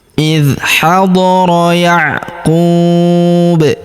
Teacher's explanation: huruf ku kita panjangkan 2 harokat karena terdapat waw sukun di depannya